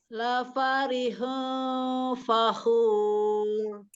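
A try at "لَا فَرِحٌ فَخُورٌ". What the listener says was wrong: Pakai dhammah. Jadi harus benar-benar monyong mulutnya. La farihun fakhur.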